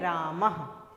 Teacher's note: यह जो विसर्ग है इसका जब उच्चारण करते हैं तो ह की ध्वनि निकल कर आती है।